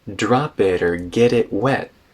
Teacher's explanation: the vowel in or actually reduces to ER